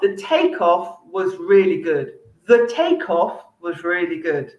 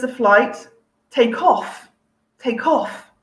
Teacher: so i'm stressing the second part because i'm using it as a verb